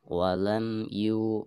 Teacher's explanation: dan huruf mim lagi di sini bertemu dengan huruf ya maka mim sukun di sini harus dijelaskan dengan cara merapatkan kedua bibir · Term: izhar syafawi